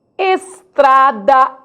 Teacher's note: estrada é oral e o timbre fechado estrada eu não falo és eu falo ex